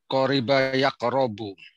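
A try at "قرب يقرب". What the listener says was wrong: Qoroba, enggak, bukan qoriba. Dia fa'ala yaf'alu. Qoroba yaqrabu.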